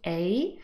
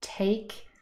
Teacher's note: the phonemic transcript there is a looks like two symbols but they form a diphthong a double vowel sound so it's really only one long vowel sound